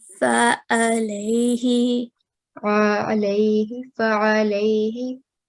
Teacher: the sound of ayn should come from the middle of your throat.